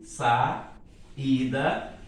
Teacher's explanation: Uma vogal numa sílaba, a outra vogal na outra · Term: hiato